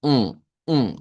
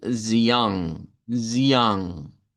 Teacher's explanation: Una vocal con sonido um, um, con un sonido muy nasal. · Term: vocal nasalizada